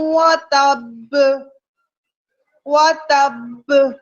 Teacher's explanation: اور مشدد حروف قلقلہ کو جب ہم ساکن کرتے ہیں تو ہم بہت طاقتور قلقلہ ادا کرتے ہیں